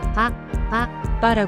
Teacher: 한국어의 빠 발음과 유사하게 입술을 닫았다가 터뜨리면서 내는 소리입니다. 강하게 파열하는 느낌으로 발음해야 합니다. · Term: 반타금